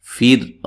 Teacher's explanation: را کو باریک پڑھنا ہے، را ساکن اس سے پہلے زیر ہے